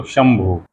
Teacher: दूसरी तरफ शंभु, बिंदी म हो जाती है। वही तालव्य स, वही बिंदी, लेकिन फिर भी हम उसको म पढ़ते हैं।